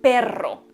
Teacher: Alveolar porque la lengua la ponemos en los alveolos, que es lo que está encima de los dientes de arriba. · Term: vibrante alveolar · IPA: /r/